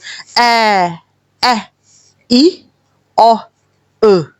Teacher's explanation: کہیں پہ بھی آپ کا منہ بند نہیں ہوا، زبان نہیں ہلی ہے، صرف منہ کھلا ہے اور آواز باہر نکلی ہے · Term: شارٹ ساؤنڈز